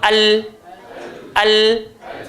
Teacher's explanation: Jadi bila lidah kita pergi betul-betul bahagian hadapan sekali belakang gigi, dia akan keluar huruf lam.